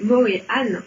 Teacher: On devrait même prononcer Morihan en faisant un H de gorge.